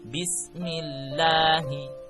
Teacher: jika lafaz Allah didahului harakat kasro, maka hukum bacaannya tarkik atau tipis